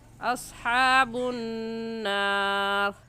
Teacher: نون مشدد ہے اور نون مشدد پر غنہ ہوتا ہے، تو غنہ کریں گے